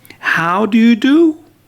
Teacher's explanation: So the last word in the expression, in the question, is a rising intonation, not falling down, rising. You feel your voice is high.